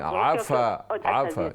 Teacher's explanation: आइन के जबर को लंबा न करें।